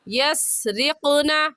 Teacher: قاف حروف قلقلہ میں سے ہے، قلقلہ کریں گے یعنی لفظ کو ہلا کر پڑھیں گے